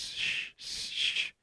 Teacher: They should very quickly be able to feel in their own mouths that the S moves backwards to get to sh.